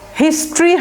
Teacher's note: এই টরিটা আমরা টরি বলবো না, ট্রি, ইন্ডাস্ট্রি যেরকম উচ্চারণটা এটা হিস্ট্রি হবে, নট হিস্টোরি। যদিও ইন্ডাস্ট্রি বানানটা কিন্তু আলাদা, কিন্তু ইন্ডাস্ট্রির মতো উচ্চারণ করবেন হিস্ট্রিটা।